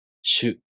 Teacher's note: To pronounce しゅ, the tongue moves from the [ɕ] consonant to the [ɯ] vowel.